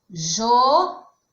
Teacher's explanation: João é uma oxítona, porque a sílaba mais forte é a última.